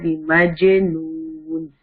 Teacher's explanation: جیم قلقلہ letter ہے, جیم پہ سکون آ گیا ہے تو اس سے ہم اس کو شیک کر کے پڑھیں گے